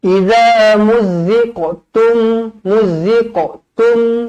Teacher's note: satu nipis satu tebal I muz Za muziqo muzziqo Qalqalah Sugra huruf qaf huruf Qalqalah jadi dibaca melantun